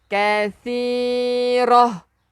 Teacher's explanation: Hujung lidah keluarkan sikit untuk sa. Kathirah. Tak marbutah.